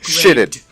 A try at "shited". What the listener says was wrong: Shited, because there's only one T.